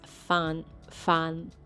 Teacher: it has a nasal sound ends with your tongue touching the back of your top teeth